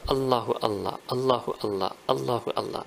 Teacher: And then in the middle, because you're going to say this continuously, so the way the Arabic language is, you will vocalize it in the middle, but there will be jazm, you will pause, have a glottal stop at the end.